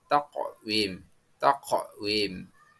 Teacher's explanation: cara membacanya yang benar adalah memantul atau qolqola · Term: qalqalah